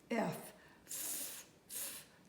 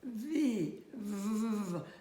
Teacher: same sound, only again, the V is sounded with your voice box